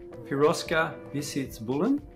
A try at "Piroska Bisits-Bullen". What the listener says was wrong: Piroska Bisits-Bullen. Make the S like an SH.